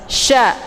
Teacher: makna tafashi itu menyebarkan angin keluar dari mulut. Sya, jadi anginnya itu berhambur ya.